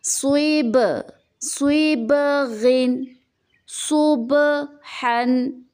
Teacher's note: اس جھٹکے کی آواز کو قلقلہ کہتے ہیں۔ جیسے کہ با کے اوپر سکون ہے تو با کو کس طرح تلفظ کریں گے؟ جھٹکا دے کے